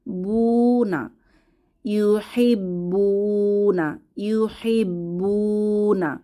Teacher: এখানে বুতে ওয়ামাদ এক আলিফ টেনে পড়বো বুনা ইউব্বুনা ইউব্বুনা এখানে বা এর উপরে সাদ্দা সাদ্দা তার উপরে